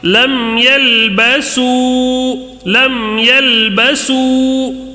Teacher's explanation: میم ساکن کے بعد یا آیا ہے تو اظہار شفوی ہوگا، اظہار ہوگا یہاں پہ، میم ساکن کا اظہار جلدی پڑھنا ہے